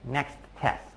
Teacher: I might have stopped at the end of next, but only for a very short period of time before going right back to the next T sound for test.